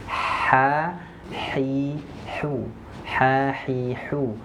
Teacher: huruf ha sifat pertama dia Hamas yaitu mengeluarkan nafas